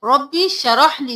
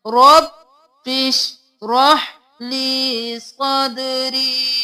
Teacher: رب بش الف کو نہیں پڑھیں گے، رب بش رح لی شین ساکن ہم ہا ساکن بالکل دونوں کو ساکن رکھنا ہے، دونوں کو ہلانا نہیں ہے